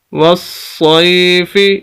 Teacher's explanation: سواد کو سخت کر کے پڑھیں گے اور پھر سواد کو آگے یا کے ساتھ بھی ملائیں گے